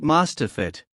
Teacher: we're transferring the final consonant sound of the first word to the beginning of the second word, effectively merging them into one continuous, smooth-sounding word. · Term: linking